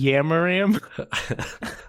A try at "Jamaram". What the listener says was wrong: Just go back to the normal pronunciation of J and just say Jamaram and just